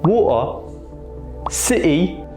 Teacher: this is from a type of British accent where there's that glottal stop